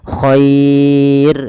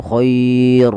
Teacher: maka dinamakan dengan mad lin ketika kita wakaf maka minillahiir dan r-nya ini tidak boleh ditebalkan tapi dibaca dengan tipis dan kita namakan dengan ro tarqik